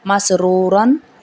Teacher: میم زبر سین مس، را پیش واؤ رو، را الف دو زبر رن، مسرورن. مس میں سین سیٹی والا ہے اور را کو موٹا پڑا جائے گا